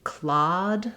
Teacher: the a that's rounded and the a that's unrounded has been lost in some regions of the US